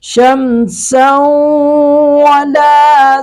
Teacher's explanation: کل کے سبق میں بھی ہم نے پڑھا تھا شمسن، اس کو ہم ادغام باغنہ کریں گے، نون تنوین کا ادغام کریں گے واو میں، اور نون تنوین کی آواز کو لے جائیں گے ناک میں